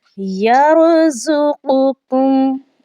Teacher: زا جو ہے وہ سیٹی کی آواز والی ہوتا ہے، اور وہ سختی کے ساتھ پڑھا جاتا ہے، مضبوطی کے ساتھ پڑھا جاتا ہے۔ · هذا الذی یرزقکم، اب دیکھیں یہاں پر زا ہے، یہاں پر ہم نے زا کو زا ہی پڑھنا ہے، مضبوطی کے ساتھ پڑھنا ہے۔ را کو ہم نے پور پڑھنا ہے، موٹا پڑھنا ہے، چونکہ پہلے والے اس کے لفظ پر زبر آ چکی ہے